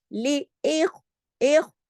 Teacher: ख्वा जो है मोटा भी है, साकिन हालत में भी है, और खराश के साथ भी पढ़ा जाएगा